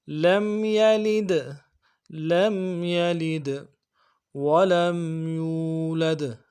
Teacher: جو لم ہے، میم ساکن ہے، لم میں میم ساکن میں غنہ کریں گے، لم یلد، لید غنہ کریں گے، یہ جو دال ہے یلید اس میں قلقلہ ہوگا